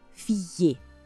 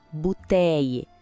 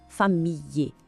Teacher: O som do L praticamente desaparece e dá lugar esse som de I. · É quase como se o L sumisse e virasse um som de I um pouquinho mais longo.